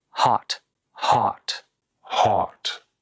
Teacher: just say something in the middle as in hot hot heart either with a little rounding or without any rounding is okay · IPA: /ɒ/